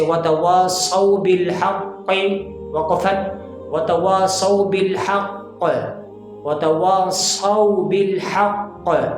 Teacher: तो अब यहाँ पर जो कलकला होगा कलकला अकबर होगा, यानी सबसे बड़ा वाला कलकला होगा